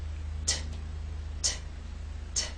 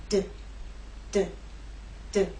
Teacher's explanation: These 2 consonant sounds are made basically the same way, but T is quiet, it's unvoiced, and D is voiced. So you'll feel no vibrations when you make the true T sound. T, t, t. And you will feel vibration when you make the D sound.